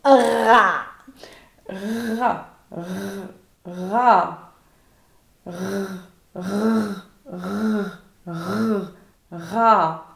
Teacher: en portant le bout de la langue jusqu'au haut du palais, de sorte qu'étant frôlée par l'air qui sort avec force, elle lui cède et revient toujours au même endroit, faisant une manière de tremblement